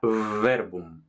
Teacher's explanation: V se llama labio dental porque tocan los dientes superiores contra el labio inferior, igual que la F, pero en lugar de F será verbum.